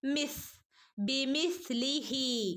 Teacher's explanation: പല്ലിന്റെയും നാവിന്റെയും ഇടയിലൂടെ കാറ്റ് പുറത്തേക്ക് പോകുന്ന രൂപത്തിൽ ആവണം സുക്കൂന് കൊടുക്കേണ്ടത് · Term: സിന് സുക്കൂന്